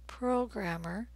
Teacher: In the U.S., we say programmer. The stressed vowel sound is O is in rose, programmer.